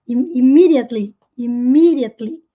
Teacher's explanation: o D quando vem entre sons de vogais. Os americanos costumam pronunciar com som de R. Então, sim, pode soar immediately.